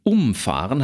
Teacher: In Umfahren haben wir es mit einer Verbpartikel zu tun, die ziehen den Akzent auf sich.